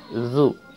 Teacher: Ketika fathah dibuka za. Ketika kasrah seperti senyum zi. Ketika dhammah monyong bibirnya zu.